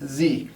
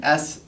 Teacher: to illustrate this is what's the difference between s and Z you actually have your mouth in the exact same position and switch between the two by making your vocal cords voiced or unvoiced